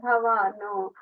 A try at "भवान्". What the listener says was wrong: the third line and griham, you're saying little bit bhavanu, oo sound is coming, just bhavan in.